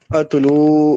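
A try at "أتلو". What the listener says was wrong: زیادہ نہیں کھینچتے. اتلو نہیں، اتلو بس. تتلو یا تلو، زیادہ مد نہیں ہے اس میں.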